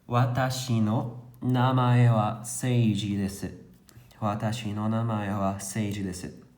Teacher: O tempo de fala de cada mora é muito semelhante um ao outro.